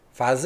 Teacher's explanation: ele é um som lábio dental